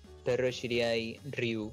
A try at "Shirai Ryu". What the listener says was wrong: Shirai, Shirai Ryu. Dijiste Shiriai. No, dijiste Shiriai.